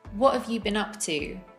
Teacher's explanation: The word we're reducing here is have. We say it as of.